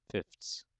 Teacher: have the f sound the th sound and the s sound the th sound becomes difficult to pronounce or distinguish so it might be pronounced as a stop instead just a t sound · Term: dissimilation